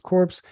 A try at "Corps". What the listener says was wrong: Corps. You don't pronounce it. Corps.